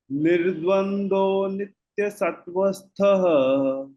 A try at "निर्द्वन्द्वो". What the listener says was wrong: When you say nirdvandvo, dva, it is not nirdvando, nirdvandvo. That again is a play of the v sound.